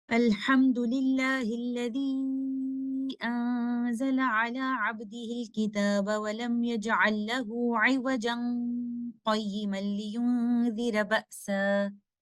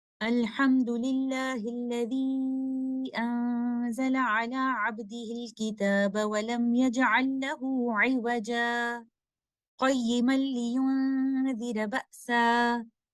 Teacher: we will do sakt after the word عوجا, and then without taking a new breath, we will continue with second ayah